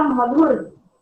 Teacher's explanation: ध महाप्राण ध्वनि है, महाप्राण ध्वनि का मतलब होता है उसके साथ ह जुड़ा है, यानी कि अधिक प्राण वायु की आवश्यकता होती है महाप्राण ध्वनियों के उच्चारण के लिए।